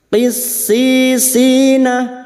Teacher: Huruf qaf jangan samakan dengan kaf. Huruf qaf adalah huruf isti'la, lidah yang terangkat. Qissisina masuk pada huruf sin.